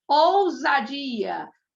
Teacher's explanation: Entre o U e entre o A. Quando eu tenho o S entre vogais, ele vai ter o som de Z. Você sempre vai pronunciar com Z, tá bom?